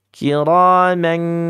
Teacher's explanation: ikhfa yang jauh makanya pakai eng ya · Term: ikhfa ab'ad